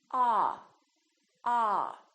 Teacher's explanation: your jaw is all the way down and your lips are kind of oval shaped like an egg a don't push your lips forward too much don't say oh